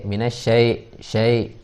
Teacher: Terus kemudian syai, itu harus jelas i-nya, jangan jadi e.